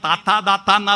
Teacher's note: പല്ലിന് തൊട്ടു പറയുന്ന താത്താ താത്താന്ന ദന്ത്യം